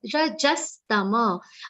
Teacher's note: Ja should be complete sound. Ja has a aghat of sa. Rajastama. Again here also the ma sound will be complete and not tam.